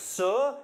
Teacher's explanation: your tongue moves up towards the alveolar ridge, behind your teeth, so close that the air flowing by gets all noisy and strident.